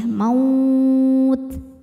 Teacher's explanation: Jangan lupa keluarkan hams di ta atau angin ya. Maut. Di atasnya ada tanda waqaf, al-waqfu aula, artinya berhenti lebih utama.